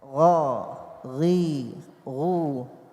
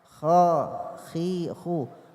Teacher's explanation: Jadi pengucapan pada gha itu mengalir suara, tertahan nafas. Kalau kita alirkan nafas pada gha itu menjadi kha. Ghairil ditahan suara nafasnya ya, dan suaranya yang mengalir.